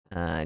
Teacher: Maksudnya idgham al-ghunnah. Membaca dengan idgham kena ada dengung, tetapi jangan masuk totally.